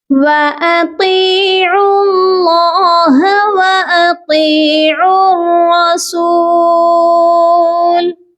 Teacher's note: طا کو ہم کھینچیں گے کیونکہ طا کے ساتھ یا مدہ ہے